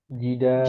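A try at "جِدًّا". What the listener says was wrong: Dalnya bertasydid ya. Jiddan. Jiddan.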